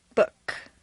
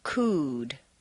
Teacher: We're contrasting the sound oo, a strong, non-reducible sound, oo, that is made far forward in the mouth, with the lips fully rounded